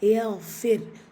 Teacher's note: ராசுக்குன் முன்னாடி கெஸ்ரா வந்திருக்கிறதுனால அந்த ராசுக்குனை நம்ம ஹெவிப்படுத்த தேவையில்லை